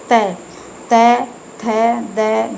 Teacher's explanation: त, थ, द, ध ये दंत व्यंजन है क्योंकि दांतों के साथ में टच होकर ये व्यंजन निकलते हैं